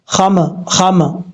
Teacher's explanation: جب یہ ساکن ہوں تو ان میں قلقلہ کیا جاتا ہے، اس کے علاوہ کسی حرف میں قلقلہ نہیں ہوتا۔ اب یہاں پر میم ساکن ہے تو آواز جب یعنی ہونٹ جب ملیں گے تو اگر ہونٹوں کو فوراً واپس کریں گے، واپس لوٹائیں گے تو یہ قلقلہ ہو جائے گا